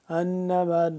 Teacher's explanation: انما مشدد پہ غنہ ہوگا